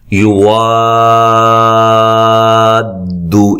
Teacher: الف مدہ کے بعد تشدید آ رہی ہے اور یہ بڑی مد ہوتی ہے ، طول، ٹھیک ہے، 5 سے 6 الف کے برابر آپ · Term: مد لازم